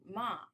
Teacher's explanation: And the fourth one, ma, you have a falling one.